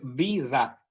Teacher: en esa posición intervocálica, como las vocales son abiertas con respecto a las consonantes, esa D se pronuncia con un poquito más de abertura